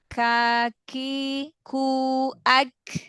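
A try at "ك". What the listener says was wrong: Ak. Bukan at, huruf kaf.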